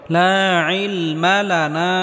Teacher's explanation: মাদের হরফের উপর চিকন চিহ্ন আসার কারণে তিন আলিফ পরিমাণ লম্বা করে টেনে পড়তে হবে